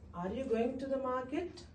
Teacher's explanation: It's a question and it has a high intonation in the end.